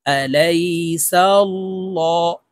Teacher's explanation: আল্লাহ শব্দের আগের হরফে জবর আছে তাই এই লামকে ল বলে অর্থাৎ মোটা করে পড়ব